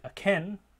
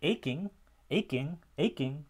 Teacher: there's less or even no aspiration there's no puff of air with that k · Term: unaspirated k